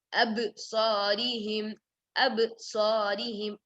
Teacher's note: Then absarihim, ba with qalqala, bouncing.